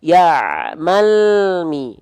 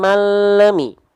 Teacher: jangan bunyi vokal yang keluar, bukan le tapi bunyi konsonan l